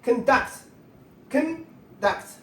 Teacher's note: Conduct. Conduct. The first syllable is stressed.